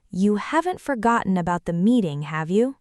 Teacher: Right, because the main sentence is negative, haven't forgotten, so the tag flips to positive, have you, and the rising tone means you're genuinely a little nervous they forgot